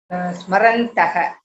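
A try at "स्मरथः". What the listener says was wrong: Alpa prana or mahaprana? When does alpa prana come and when does mahaprana is coming? So it will be mahaprana. Smarantaha. Smarantaha and not smarataha. Sorry, smarathaha and not smarataha. Yuvam shlokam smarataha and not smarataha.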